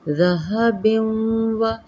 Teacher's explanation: ہے، ذہب و، یہ دیکھیں یہاں پہ یرملون کا قاعدہ ہے، و ادغام ہوگا ما غنہ، تنوین کے واو کے اندر ہم اس کو ادغام کریں گے